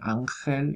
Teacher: se está pronunciando en la zona velar